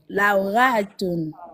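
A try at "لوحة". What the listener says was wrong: C'est pas ra. Ha. Ha. Halima. Ha. Halal.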